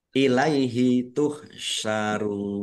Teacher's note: Mad jaiz munfasil dibaca panjang boleh lima, boleh dua harakat